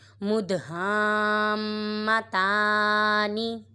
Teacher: ادھر دال ساکن ہے، یہاں پہ قلقلہ ہو گئے، اور ادھر الف مدہ کے بعد تشدید آ رہی ہے، ادھر مد لازم ہو رہا ہے اور میم مشدد میں گنہ کریں گے